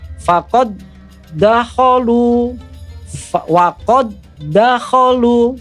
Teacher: dal yang pertama yang aslinya adalah huruf qalqalah, huruf qalqalahnya tidak kelihatan atau hilang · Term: idgham mutamasilen